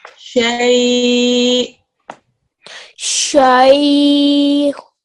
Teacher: Don't forget that with the hamza sakin, which is what this becomes in waqf, there's a slight jerk at the end.